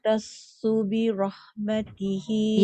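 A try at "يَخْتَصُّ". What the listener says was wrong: Yakh. Jangan yah. Yakh.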